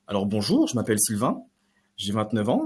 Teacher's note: Donc là, j'ai fait une intonation montante constamment et vous avez eu cette impression-là que j'allais continuer. Alors que non, j'avais terminé.